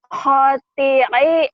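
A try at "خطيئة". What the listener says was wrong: Panjang.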